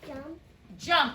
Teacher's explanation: If we were to mark this up, the ED makes the sound of T.